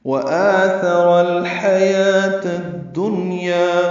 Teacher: ہا وسط حلق سے ادا کریں گے ، یا کو 2 حرکات لمبا کرنا ہے، واو نہیں پڑھنا، · تا مربوطہ ہے، اس کو الدنیا کی دال سے ملا دینا ہے، ادغام شمسی ہوگا، اس لیے دال مشدد ہے